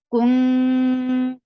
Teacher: But you are going towards the makhraj of ta. Your tongue should be very much ready to pronounce ta, and you are keeping the sound in your nose. This is what ikhfa is.